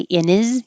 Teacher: you don't have to say the h in his